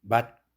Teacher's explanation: 맛 할 때 맛이 시옷이지만 디귿으로 대표음화 되죠.